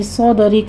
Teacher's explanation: صاد میں صاد کو پر پڑھیں گے، دال کے اوپر قلقلہ ہوگا، را باریک پڑھی جائے گی۔